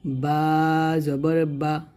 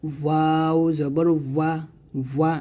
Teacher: তারপর এটা হচ্ছে বা, এটা হচ্ছে ওয়াও। বা যখন উচ্চারণ করবেন দুইটা ঠোঁট মিল করে উচ্চারণ করবেন, আর ওয়াওটা দুই ঠোঁট গোল করে উচ্চারণ করবেন। তাহলে এটা হবে বা জবর বা, আর এটা হবে ওয়াও জবর ওয়া, ওয়া, এরকম।